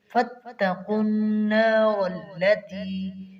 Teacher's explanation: فَاتَّقُوا مشدد بھی ہے اور آگے قاف موٹا ہے ، اس کی ادائیگی اچھی طرح کریں گے، فَاتَّقُوا النَّارَ الَّتِي،